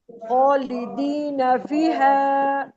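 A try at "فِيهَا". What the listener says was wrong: ये जो हा है ना, इसको खींचना है ज्यादा, इसके ऊपर मद भी है,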